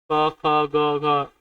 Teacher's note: क वर्ग के व्यंजन कंठ से निकलते हैं